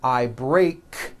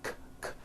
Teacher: Break ends with an unvoiced K sound. K, k. There's no voicing on that K.